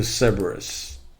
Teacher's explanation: Stress on the first syllable, both British and American pronunciations.